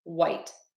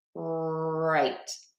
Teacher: for white, my tongue is just flat on my mouth. White. And for right, the tip of my tongue is down